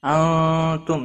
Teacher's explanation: نون ساکن کے بعد حروف اکفا کا تا آیا ہے، اخفا حقیقی ہوگا